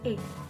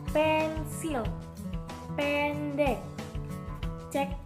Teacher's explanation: E taling tertutup. Dilafalkan dengan rahang yang lebih terbuka dan mulut yang lebih besar.